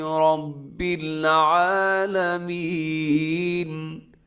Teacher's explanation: را کے اوپر زبر ہے، تو جب را کے اوپر کوئی حرکت ہوتی ہے را موٹی ہوتی ہے